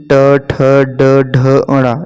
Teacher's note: ये मूर्धा से उच्चारित होने वाले हैं